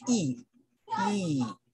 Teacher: it is produced when the tongue moves forward and the height of the jaw is high and the duration of the sound is long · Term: long e